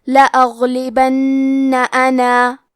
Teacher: کلمت لأغلبن میں حرف الغین ہے. غین کی ادائیگی حلق کے اوپر والے حصے سے ہے. غین حروف تفخیم میں سے ہے تو ہم یہ حرف کو موٹی آواز میں پڑھیں گے اور کیونکہ یہاں غین ساکن ہے تو ہمیں غین کو ظاہر کرنا ہے. · اور ہم کلمت انا پہ رکے تو مد الف کو ظاہر کریں گے · با پہ زبر ہے تو ہم زبر کو ظاہر کریں گے اور حرف النون کو 2 حرف کے برابر پڑھیں گے کیونکہ اس پہ تشدید ہے. کلمت انا کے آخری میں مد الف ہے لیکن ہمیں مد کو ظاہر نہیں کرنا ہے.